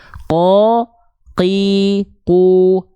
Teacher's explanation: dia pangkal lidahnya menyentuh ke langit-langit yang warna pink saja atau di sini langit-langit yang lunak saja Q qu ba a AQ qo dia enggak keluar nafas ya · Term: huruf q